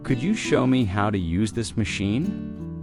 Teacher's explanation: Could you becomes could ya in casual rhythm.